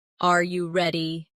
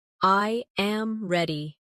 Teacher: For example, when a native speaker asks a yes or no question like are you ready? The pitch of their voice goes up at the end.